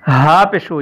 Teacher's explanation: یہ ہا ہے، اس کی آواز سینے سے نکلتی ہے